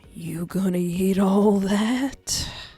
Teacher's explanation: His voice is slightly uneven, breathy. Oh, so it's more like, you gonna eat all that? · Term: deep and breathy